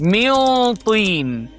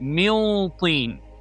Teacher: So Noon Sakin followed by Ta, Ikhfaa with deep ghunnah.